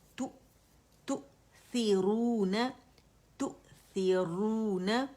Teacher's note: یہ واو مد طبیعی حرکتین ہے، دو اسے مطلب 2 کاؤنٹ کھینچا جائے گا اسے